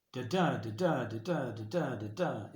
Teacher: unstressed stressed unstressed stressed five times throughout each line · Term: iambic pentameter